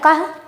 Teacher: विसर्गों को उच्चारित करते समय कंठ से वायु आती है, इसलिए इनका उच्चारण स्थान कंठ होता है